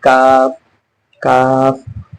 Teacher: जबान का जो जड़ है हमारे तालू के सख्त हिस्से, तालू के सख्त हिस्से में टच हो रहा है